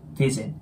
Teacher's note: 最初の▁V▁の音は下唇の粘膜を挟んで、ふふのように発音します。